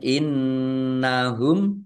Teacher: nun tasdid dibaca ghunah atau mendengung. Ditahan biar tampak mendengungnya.